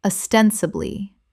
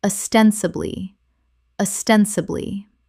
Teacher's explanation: Four syllables with the stress on the second, meaning apparently or seemingly.